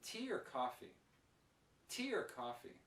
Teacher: the or becomes ER and the Earth is very short very quick and very weak